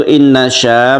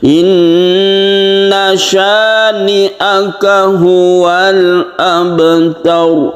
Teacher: Inna syani'aka, jadi sya langsungkan ke ni'aka, satu alif saja atau dua ketukan saja